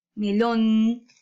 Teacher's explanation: En lon, porque hay mayor fuerza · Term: sílaba tónica